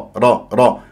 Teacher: لازم تقرا الراء را را را و من غير تكوير للشفاه